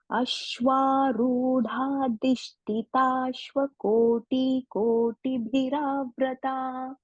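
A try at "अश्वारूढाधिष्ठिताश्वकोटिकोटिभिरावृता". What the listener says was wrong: Ashwarudha dhishtitashva. So here Mahaprana tha, okay? And koti, once again, koti bhi. Everywhere it is short vowels, Hasvaswara. Koti bhi.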